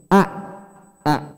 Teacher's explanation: di tenggorokan bawah itu ada huruf hamzah